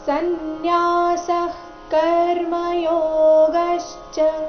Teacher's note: ಸನ್ಯಾಸ ವಿನ್ಯಾಸ ಆದ ನಂತರ ಇರೋ ವಿಸರ್ಗದ ಉಚ್ಚಾರಣೆ ಅರ್ಧ ಖರೀತಿ ಯಾಕಂದ್ರೆ ಮುಂದಿನ ಶಬ್ದ ಕರ್ಮ ಯೋಗಶ್ಚ ಕ ದಿಂದ ಶುರುವಾಗ್ತಾ ಇದೆ